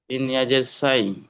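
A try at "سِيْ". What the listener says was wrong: না, সিন ইয়া জবর সাই, আমি আপনাকে বলেছিলাম ওটা হচ্ছে ইয়ালিন। এখন আমরা পড়ছি সিন ইয়া, জের পড়ছি আমরা, জবর পড়ি নাই।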